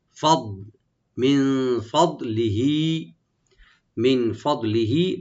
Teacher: ফদলিহি, ফাদ ফাটাকে ওপেন রাখবেন আর দোয়াটাকে এখানে রাইট দিবেন, কিন্তু কলকলা যেন না হয়, ইকো যেন না হয়, শুধু আমরা মাখারাজ থেকে আদায় করবো একটু মোটা করে